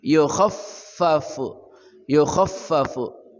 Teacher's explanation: fa ada dua, yukhaffafu, kha ujung kerongkongan